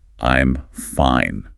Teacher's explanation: I look down at my empty plate, let out a slow sigh, and say in a very flat, short, unexpressive voice, "I'm fine." In this scenario, the word fine means the absolute polar opposite of fine. The flat, monotone delivery and the short, clipped pronunciation of the word act as a massive warning signal of passive aggression. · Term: flat tone